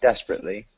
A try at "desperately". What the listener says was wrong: Close, yeah. You're pronouncing an extra syllable that looks like it's there that's not desperately. Desperately.